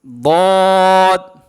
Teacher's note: জিহ্বার গোড়ার কিনারা উপরে মারির দাঁতের গোড়ার সঙ্গে লাগায়া দদ অক্ষর মোটা করে পড়তে হয়। বলেন দদ। জিহ্বার গোড়া, জিহ্বার গোড়ার কিনারা উপরে মারির দাঁতের গোড়ার সঙ্গে লাগায়া দদ, দদ অক্ষর উচ্চারণ হয়।